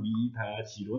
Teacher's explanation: 디귿이 위로 올라붙어서 미다디로 소리가 나야 하지만 실제로는 미다지로 납니다